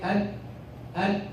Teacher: That is the noon. You touch the alveolar ridge with the front part of the tongue.